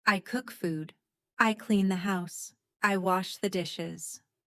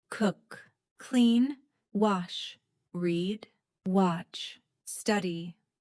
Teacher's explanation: Notice how I stress the important action words.